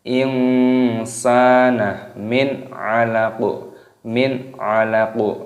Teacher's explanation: Nun sukun bertemu dengan ain, hukumnya dibaca idhar halqi. Idharnya jelas, halqi artinya tenggorokan, karena ain termasuk huruf yang keluar dari tenggorokan.